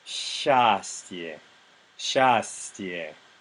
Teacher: Because the surrounding consonants are both soft, the vowel gets a slightly brighter ah sound instead of the regular Russian ah.